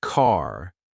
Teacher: So when Americans say car, you can clearly hear the R at the end. But in British English, the R is often silent unless it's followed by a vowel sound.